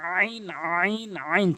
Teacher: চাপ দিয়ে বলবেন হলকের মাঝখান থেকে